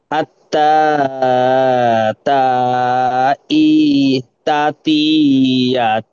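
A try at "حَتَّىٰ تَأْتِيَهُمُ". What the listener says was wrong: হাত্তা তা তিয়া হুমুল। এই এই যে হাটা আছে, এটা আপনি তা বলে ফেলেছেন, এটা হু হবে, তু নয়।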